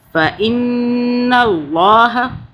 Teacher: اللہ کو موٹا پڑھیں گے کیونکہ اللہ سے پہلے زبر آ رہا ہے